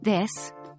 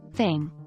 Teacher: The voiced version has vibration of the vocal cords while the unvoiced version does not